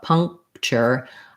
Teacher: I barely even would put that K in because it's almost basically dropped out. Puncture. Because my NG position is so close to my K position, I just block the air and make a stopping of the air, and then I release right into the CH sound. · Because my NG position is so close to my K position, I just block the air and make a stopping of the air, and then I release right into the CH sound. And then here's another of our unstressed sounds at the end.